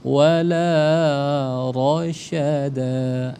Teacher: Jadi enggak ada ra karena ro itu dia tafkhim tebal.